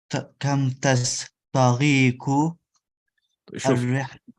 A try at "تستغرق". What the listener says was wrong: Is there a difference between تستغرق and what you are saying تستغير? Look, this sin got a sukun, this ghain got a sukun. تستغرق. تستغرق. You need to make your ra clear. تستغرق. One by one. حبة حبة.